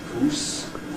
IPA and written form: guːs (goose)